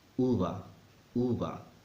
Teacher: to sound like a native speaker you need to remember that when either the B or the V are between vowels sound softer almost as if someone is drunk